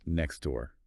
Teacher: The T is either dropped completely or very, very soft. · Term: disappearing sounds